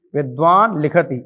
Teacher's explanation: विद्वान लिखती में जो ल है वह अनुनासिक आ गया